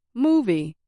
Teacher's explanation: the sound a little longer than other parts for example movie I said moo a little louder and longer than V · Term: syllable stress